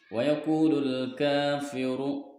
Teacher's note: mad asli atau mad tabi'i sebab huruf wawu disukun oleh dhamma atau didahului dengan harokat dhamma panjangnya 2 harokat